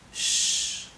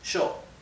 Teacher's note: the Y and the double L, instead of being pronounced y, okay, is pronounced like the English SH, sh. So this would be pronounced sho, okay?